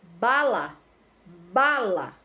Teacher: Olha como ba sai com mais intensidade, é a sílaba tônica, então ela vai ser paroxítona, tá?